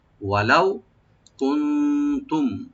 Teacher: কুনতুম এখানে গুন্না হবে না মিম সাকিনে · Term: এজাহার সফবি